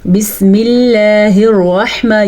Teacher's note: یہ اللہ کا نام باریک پڑھا جائے گا کیونکہ اللہ کے نام سے پہلے زیر ہے، جبکہ یہ اللہ کا نام پر پڑھا جائے گا کیونکہ اللہ کے نام سے پہلے زبر ہے.